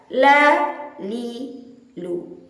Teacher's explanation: lam dilafazkan melalui suara yang dikeluarkan tanpa diiringi dengan nafas. Murni suara, tidak boleh dicampur dengan nafas. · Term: huruf lam